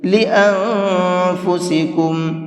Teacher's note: تھوڑا سا ناک میں آواز کو چھپا کر کے پڑھیں گے، اس لیے کہ یہاں پر یہ نون ساکن ہے اور نون ساکن کے بعد میں فا آ رہا ہے۔ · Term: اخفا